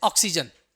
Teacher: ना तो हम आ बोलेंगे ना तो हम ओ बोलेंगे बीच का बोलेंगे